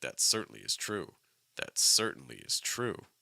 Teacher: we go up on certainly, but certainly is not the primary stress. The primary stress is true.